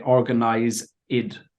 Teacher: So like organized, sometimes you'll say organize id. So you put an extra I sound where it doesn't belong.